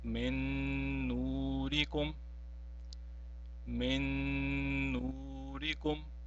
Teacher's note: In the first example, you see that there is a noon sakin which is followed by a noon and it has been mushaddad. Now, we will not pronounce the first noon sakin, but since the second noon is mushaddad, we have to pronounce it and by prolonging it as well. Now it will be read as min nurikum, min nurikum. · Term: idgham